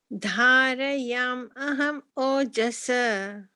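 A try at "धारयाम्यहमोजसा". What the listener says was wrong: Dharayamyaham ojasa. That why? Can you put in a why sound at that joining point? Dharayamyaham. If you're splitting the words, then you could say dharayami aham ojasa. You could say it that way.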